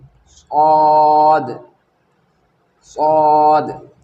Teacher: सौद ज़ुबान की नोक सनाया सुफला नीचे के दो दांत यानी नीचे के दो दांत के जड़ में लगने से सौद अदा होता है, इस तरह से सौद।